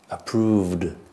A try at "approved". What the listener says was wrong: Okay, so you're saying it's a D, but when you say the word, you're not saying a full D. Approved.